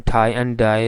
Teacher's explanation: In th, in thai and die, the first sound th and d, because both these sounds are pronounced at the alveolar ridge, so there is a closure at the alveolar ridge.